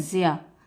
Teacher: इसे ज्ञा नहीं बोलते हैं, इसे बोलते हैं ज्या, क्योंकि ये जा और या मिलके बना हुआ है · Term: संयुक्त व्यंजन